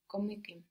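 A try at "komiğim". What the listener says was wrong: The K gets softened to a G, but it gets really softened to a soft G. So instead of komikim, we got komiyim.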